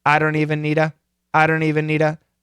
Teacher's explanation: Of course, the T is gone.